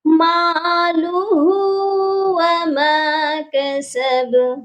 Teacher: مالہ کی جو ہا ہے اس کو ایک الف کے برابر لمبا کریں گے، کیونکہ اس کے اوپر پیش الٹی والی ہے، الٹا پیش ہے.